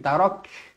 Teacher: huruf kaf dibaca hamas, berangin